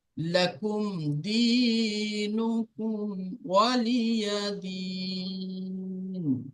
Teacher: মিম সাকিনের পরে দাল এসছে, তাহলে বিনা গুন্নায় মিলিয়ে পড়তে হবে। মিম সাকিনের কায়দা আমরা পড়েছি যে মিম সাকিনের পরে মিম আর বা ছাড়া যদি অন্য কোনো শব্দ আসে তাহলে কি হবে, তাহলে বিনা গুন্নায় মিলিয়ে পড়তে হবে।